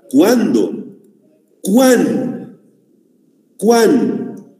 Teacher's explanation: Pronuncio la U y la A. Por lo tanto, es un diptongo.